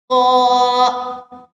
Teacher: ये मोटा हरूफ है, हम होंठों को गोल करके पढ़ेंगे और इसको मोटा करके भी पढ़ेंगे · नेक्स्ट है दाल, इसकी अदायगी क्या है कि आपकी जुबान की नोक जो है वो सामने वाले दोनों दांतों के पीछे टच हो, तब ये वर्ड अदा होंगे।